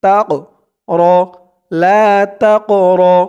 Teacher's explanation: এই কফটা হচ্ছে কলকলার হরফ ধাক্কা দিয়ে পড়তে হবে